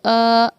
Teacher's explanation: اس کو جب ہم اس کو پڑھیں گے تو اس کو 4 الف کے برابر کھینچ کر ہمیں پڑھنا ہوگا ، جتنا وقت ہمیں 4 بار الف کہنے میں لگا اتنا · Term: مد متصل